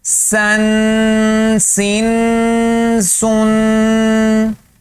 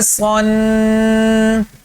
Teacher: سین باریک پڑا جائے گا، صاد موٹا پڑا جائے گا